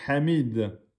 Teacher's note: la lettre ha est une lettre de la gorge milieu de la gorge